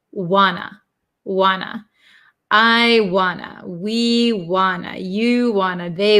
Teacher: want to is contracted to Wana because we get rid of these T sounds